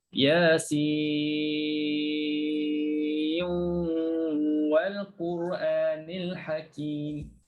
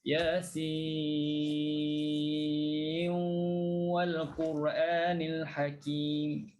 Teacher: masukkan terus dalam waw. Yasin wal Quranil Hakim. Kena ada gunnah di situ.